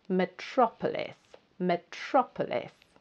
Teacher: It's quite a long word, and it's the second syllable that you need to stress. So the second syllable is the loudest and the strongest.